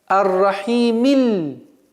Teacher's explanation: То есть огласовка кясра читается, и мы переходим на лям. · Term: слитного чтения